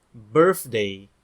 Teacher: eles falam th com som de F